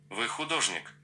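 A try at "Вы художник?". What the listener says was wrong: But it's a question, so you have to change your intonation.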